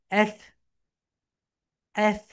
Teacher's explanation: হালকা sound, এফ, এফ। উপরের দাঁত নিচের ঠোঁটের সঙ্গে হালকা টাচ করো